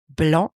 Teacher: Don't pronounce the C at the end of blanc, the color white.